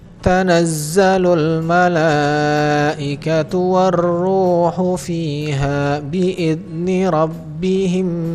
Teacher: Mim sukun bertemu dengan mim yang hidup. Maka di sini mim sukunnya masuk ke dalam mim yang hidup, ditahan 2 harokat. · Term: idgham mimi